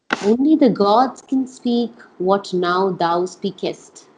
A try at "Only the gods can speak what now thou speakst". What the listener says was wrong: No, speakst. No E.